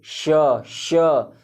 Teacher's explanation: आपका जो जीभ है तालु पे ऐसे घर्षण खाते हुए बोलेगा श और हवा निकलेगा श। और ये जो ये वाला श है इसका मूर्धा होता है, उच्चारण स्थान मूर्धा होता है। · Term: तालव्य